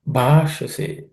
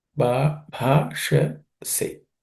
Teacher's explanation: Bhashase. Bha is aspirated consonant. Sh is cerebral sh.